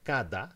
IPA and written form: kada (kada)